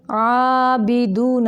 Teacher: आइन को वस्ते हलक यानी हलक के दरमियानी हिस्सा से निकालेंगे। बे नहीं करेंगे, बी दू की आवाज़ को मुंह से निकालेंगे।